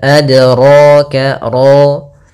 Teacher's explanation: Kemudian pada lafal ro ditebalkan